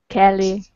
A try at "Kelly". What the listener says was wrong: Why Keely? Why would you say Keel? Okay, look at it like this. If his name was separated like this in the chat window, that would be Keely. But his name isn't like that.